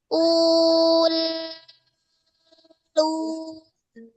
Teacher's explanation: Nah, kalau dia itu sukun ya rasa dengan ee merasakan sifat tawasudnya ul ketika sukun dia masih mengalir ya. Rasakan dia mengalir terus terhempas keluar.